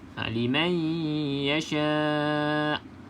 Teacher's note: Okey, tak bunyi hamzah. Walaupun hamzah ni kita matikan, kena bunyikan huruf hamzah tersebut. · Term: hamzah yang sukun